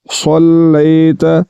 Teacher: محمد کما صلیت، تو یہاں پر دیکھیں صاد اور سین ان دونوں حرفوں کو بھی حروف قریب الصوت کہتے ہیں، ان کی آوازیں آپس میں ایک دوسرے کے ساتھ ملتی ہیں جس طرح کہ پیچھے یہ میں نے بتایا۔ تو صاد پڑھنا ہے، سین نہیں پڑھنا پر کر کے۔